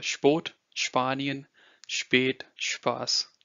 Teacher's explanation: only the S part of SP is pronounced as the sh of show